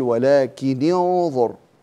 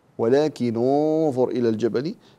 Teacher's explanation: إذا التقى ساكنان نكسر الأول، لكن القاعدة عند ورش أن الثالث هنا مضموم، فنتخلص من التقاء الساكنين بالضم. فبعض القراء يتخلص من التقاء الساكنين في مثل هذه الحالة بالكسر، يقول ولكن انظر كما هو عند حفص، وبعضهم بالضم فيقول ولكن انظر إلى الجبل، فننتبه إلى هذه الدقيقة.